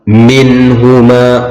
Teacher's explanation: nun mati bertemu dengan ha, idhar khalqi, harus dibaca jelas